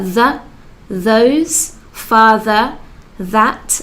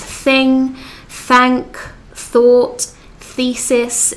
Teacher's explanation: the subtle difference between the which is a harsh sound and thu which is a soft th sound